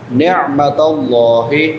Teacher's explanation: عین وسط حلق سے حلق کے درمیان سے عین ادا ہوتی ہے. نعمت اللہ حمزہ نہیں پڑھنا یہاں پہ نعمت اللہ نہیں پڑھنا.